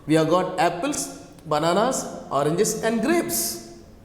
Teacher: So, grapes come down. So, intonation falls at the last and the items will rise. · The last item. So, on the last item, the intonation falls, comes down. So, finally, this is a rising, falling intonation.